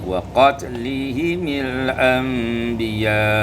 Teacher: kasrul mim waslan dibaca kasrah mim, kalau diwasalkan menjadi waqatlihimil anbiya